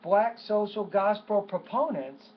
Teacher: notice how I put more stress on proponents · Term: focus word